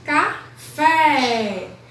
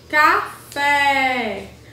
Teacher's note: A sílaba mais forte é o fé.